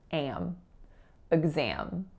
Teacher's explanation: that first syllable is a schwa, and the second syllable is a nasalized tense a sound. So it sounds like am.